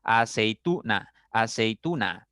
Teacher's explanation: la mayor fuerza está en la sílaba tu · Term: acento fonológico